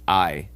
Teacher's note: in Latin is the a e we pronounce this I and if you listen very carefully in I you can hear that the a merges with the e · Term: dip thong, diphthong